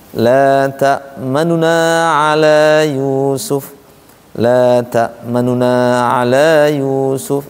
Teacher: Nah, sehingga bisa cara yang kedua dibaca dengan cara ikhtilas. Ikhtilas itu nun yang asalnya manuna dibaca cepat di sini.